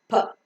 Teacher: In the pronunciation of P, like T and K, you could find a slight H sound, which is called as aspiration in English, that gives a characteristic style to English language. · So the air that is coming out from the lungs is held up in the oral cavity for some time. And when both the lips get separated, the air comes out with an explosion.